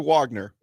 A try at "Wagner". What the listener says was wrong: Wagner. pronounce it with a V. Wagner. Yeah, we would say Wagner.